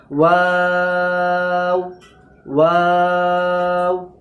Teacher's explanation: ওয়াও একটা বারিক অক্ষর, তাই জন্য বারিকভাবে বলবো, আর 3 আলিফ টান দিয়ে ওয়াওকে বলবো